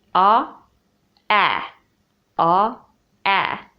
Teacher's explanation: so your tongue moves a little bit from back to front when you move from back vowel to front vowel